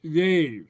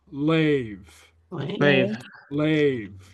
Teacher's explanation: Lenited, it's more like an English L. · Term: lenited sound